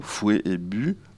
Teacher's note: Eh bien, on va voir que les mots qui sont en rouge, fouet, bu, plat, ananas, eh bien, en général, la consonne finale n'est pas prononcée dans ces mots, fouet et bu, quoiqu'il peut y avoir de la variation pour le mot bu qui peut être prononcé but, mais fouet, en général, on ne dit pas fouette.